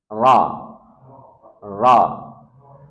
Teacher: Perhatikan huruf ro dia punya sifat takrir getaran R itu takrir ro. Tetapi ingat getarannya tidak boleh lebih dari sekali. Ro ro. Maka tempelkan pada gusi atas.